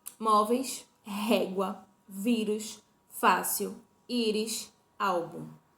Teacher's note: E o que são palavras paroxítonas? São as que possuem a sílaba tônica na penúltima posição